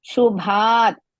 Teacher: ಭಾ ಇಸ್ ದೀರ್ಘ ಅಂಡ್ ಮಹಾಪ್ರಾಣ